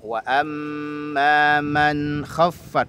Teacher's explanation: Wa amma man khaffat harus jelas bunyinya, namun sifat tawassut nun harus tetap kedengaran. Ada alirannya sedikit huruf nunnya, antara tertahan huruf syiddah, antara tertahan dengan mengalir huruf sifat rokhawah ya.